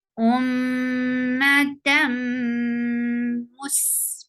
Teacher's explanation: Ma, tam, idgham with gunna, you are merging this tanween sound into meem and with gunna. You're keeping the sound in your nose.